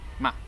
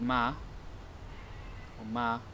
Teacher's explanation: they can have the glottal stop at the end of certain words where you'd think you shouldn't be able to hear it but really you can